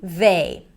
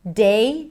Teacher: a lot of people might substitute the voice th with a d sound.